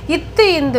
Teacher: மேல்வாய் பல்லினது அடியை நாக்கின் நுனி பொருந்துவதால் பிறக்கிறது